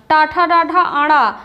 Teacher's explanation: टाठा डाढ़ा आड़ा मूर्धा से उच्चारित होता है